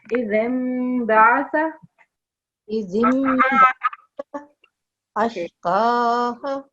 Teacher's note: Keep the Mim sound in for 2 seconds and do a bit light nasal sound.